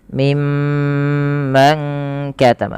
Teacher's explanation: Pada lafal mimma tahan dulu bunyi suara mimnya karena ia bacaan gunnah. Jadi cara membacanya menahan dengan bunyi suara mimnya ditahan.